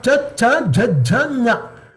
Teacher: The tongue touches the front of the mouth, roof of the front of the mouth. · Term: talu shabda